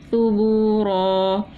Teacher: دو زبر کی تنوین تھی، ایک الف سے بدل دیا، وقف الابدال کیا